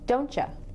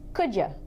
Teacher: We do not say you. We almost always say ya.